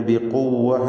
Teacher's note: പിന്നീട് ബിഖുവ്വ എന്ന് പറയുമ്പോൾ ഖാഫിനും തഫ്ഖീമുണ്ട്. അല്ലാത്ത അക്ഷരങ്ങൾക്കൊക്കെ തർഖീഖാണ് എന്നത് പ്രത്യേകം ശ്രദ്ധിക്കുക.